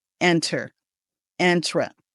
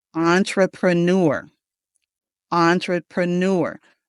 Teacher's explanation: this is a French word and the beginning of the word is on instead of in.